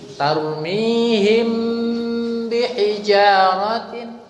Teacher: Mim mati kemudian ada ba, mim dengan ba itu satu makhraj. Ya, satu makhraj yaitu di bibir semua. Makanya ketika mimnya mati ada ba depannya, nah itu bukan idgham tetapi disamarkan.